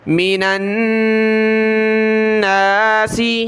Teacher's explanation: الناس، میم زیرمی، نون کو اس نون کے ساتھ ملائیں گے، نون کے اوپر یہ تشدید ہے تو غنہ کریں گے، یعنی ناک میں آواز پیدا کریں گے